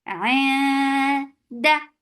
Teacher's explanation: Da for fatha open jaws, the sound is sharp and short.